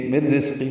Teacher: مر رزقی میں میم کو را سے ملانا ہے. یہ ادغام کاملہ، نون کی آواز ختم ہو جائے گی